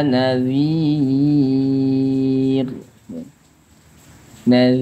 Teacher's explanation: kadar panjang 6 harakat Mad Ar sukun